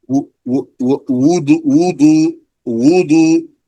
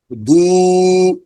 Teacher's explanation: the first one is a consonant so its exit is lips